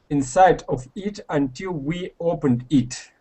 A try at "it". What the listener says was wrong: now here you're saying eat okay we want instead of e it is